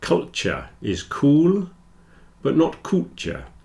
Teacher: if you're speaking quickly, the T, Y joins together into a Ch and you'll get culture.